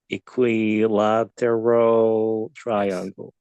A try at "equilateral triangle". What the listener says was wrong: Spot on. You You can't improve on that. Spot on.